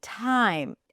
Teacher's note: the aspirated T at the beginning